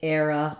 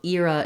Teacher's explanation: So the word era has two different pronunciations. You can either use the diphthong air for the first stressed syllable, or you can use the diphthong ear.